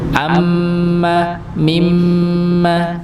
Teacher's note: ketika mim yang tasdid juga dibaca dengung